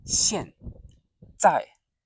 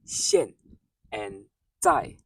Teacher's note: Keep your voice short and sharp on 现, fourth tone falling down